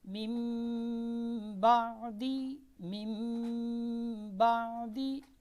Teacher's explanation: نون کو کیا کر رہے ہیں ہم میم سے بدل کر غنے کے ساتھ پڑھ رہے ہیں